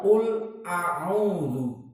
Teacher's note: Karena ucapan qul a'udzu, qul lamnya makhrajnya di lisan, di ujung lisan bertemu dengan al-hanak al-a'la, dengan gusi yang atas.